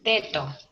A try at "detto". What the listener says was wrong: Ojo la doble T, detto.